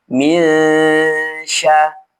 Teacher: nun ini dibaca ghunah dengan cara menyamarkan bunyi huruf nun dan diarahkan ke huruf setelahnya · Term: gunnah